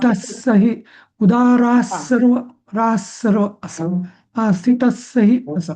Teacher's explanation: जेव्हा स येतो ना तेव्हा तो डबल विसर्ग म्हणायचाच नाही डबल स करायचा